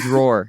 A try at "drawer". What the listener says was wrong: No, drawer. You don't say draw. You don't say draw.